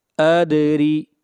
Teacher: دال کے اوپر قلقلہ کریں گے